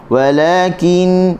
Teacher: Lam hujung tepi dia dah letak di gusi. Walakin nun bertasydid gunnah 2 harakat.